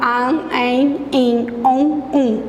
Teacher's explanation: para falar an, en, in, on, é pelo nariz. Por isso a gente fala que é nasalizado. O dígrafo vocálico, ele é nasalizado.